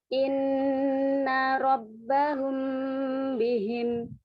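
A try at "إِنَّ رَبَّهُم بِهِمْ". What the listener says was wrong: Humnya dhammah sempurna.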